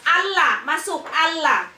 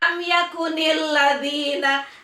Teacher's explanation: Karena alif lam bertemu dengan huruf lam. Ya, maka alif lam dibaca tidak jelas atau dileburkan terhadap lam berikutnya. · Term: alif lam syamsiyah